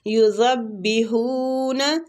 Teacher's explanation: زال کو با کے ساتھ شدت سے ملائیں گے